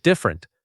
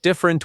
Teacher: Two syllables, not different with three.